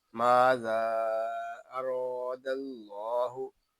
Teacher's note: रा को हम पुर पढ़ेंगे क्योंकि रा के ऊपर जबर है। रा को एक अलिफ तक खींच कर भी पढ़ेंगे क्योंकि यहाँ अलिफ मद्दा हो रहा है।